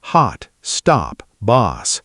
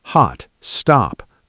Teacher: American English tends to have more of an a sound. · American English tends to have more of an ah sound, hot, stop, boss. British English tends to keep more of a rounded O sound, hot, stop, closer to how it looks spelled.